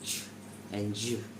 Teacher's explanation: These sounds begin as stops but release slowly into fricatives. For example, ch starts like t and release into sh. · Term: delayed release